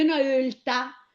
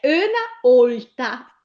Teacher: generalmente nei paesi si dice una ölta, ma il bergamasco di città, quello che parlo io, dice una olta. Allora olta con la O chiusa breve.